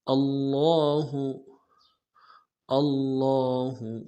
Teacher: لا مد عارض ہے، 2 الف مقدار میں کھینچیں گے